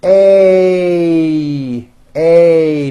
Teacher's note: this sound is a combination of two vowel sounds you start with an A and then you Glide up to an E a a notice how my mouth also closes a little bit · A and then you Glide up to an E a a notice how my mouth also closes a little bit at the end of the vowel a